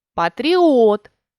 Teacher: у буквеному та у звуковому варіанті поставили наголос патріот наголошений о звук р є м'яким так як після нього йде голосний і